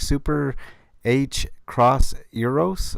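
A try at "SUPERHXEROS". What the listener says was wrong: H arrows. The X is silent. it's hex arrows, if you want to be brief.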